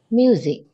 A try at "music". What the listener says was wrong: Thiếu chữ K, đọc cho anh 3 lần. Music.